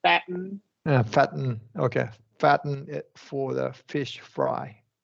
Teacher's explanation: we want to do a glottal T for fatten